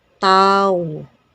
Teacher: unosperated meaning no air comes out from the mouth